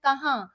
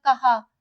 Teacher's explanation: नून की आधी आवाज जो है हमारी नाक से निकलती है कहाँ। अगर हम नून गुन्ना हटा दें तो ये बन जाएगा कहा।